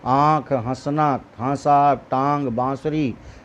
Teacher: अनुनासिक जिसमें नाक और मुंह दोनों का प्रयोग हो रहा है, नाक के पीछे से आवाज़ आती है